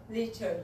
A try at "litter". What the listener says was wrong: Okay, I want more open, more breathing. Not lead. Now you're doing high tongue. We need to do low tongue. You have to push your tongue down. Litter. Just remember, you have to think about your tongue. Your tongue is low in your mouth. And breathe more.